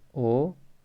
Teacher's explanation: होठ तो गोल हो जाएंगे और ध्वनि कंठ से निकलेगी। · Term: कंठोष्ठ